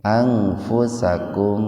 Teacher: Anfusakum idhar syafawi, mimati ketemu fa, jadi dibaca jelas syafawi di bibir